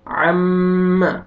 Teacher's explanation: عین زبر میم شد عم، دیکھیں میم مشدد ہے، غنہ کریں گے